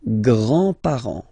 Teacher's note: Remember, you don't pronounce this final S here.